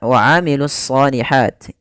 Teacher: alif lam yang dia ditulis tapi tidak dibaca sehingga langsung kepada huruf Shad Kemudian pada lafal Shad itu kita tebalkan wailus shihti ya ditebalkan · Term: alif lam syamsiah